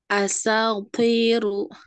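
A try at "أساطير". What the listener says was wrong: Kurang sinnya. Asatiru.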